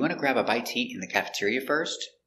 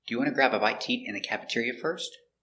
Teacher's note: this is a yes or no question so the intonation goes up at the end